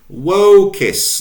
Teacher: notice the elongation of the O